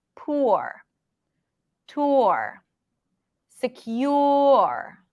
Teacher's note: like think of as if your mouth is pronouncing an O your lips are pronouncing an ooh and then you shift to the r